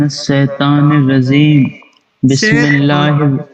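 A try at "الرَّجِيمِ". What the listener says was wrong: را کو موٹا پڑھنا ہے. را موٹی پڑھنی ہے، را کے اوپر زبر آ رہی ہے. میں نے شروع میں یہ چیز بتائی تھی، را کے اوپر جب زبر یا پیش آئے گی تو را کو موٹا پڑھیں گے.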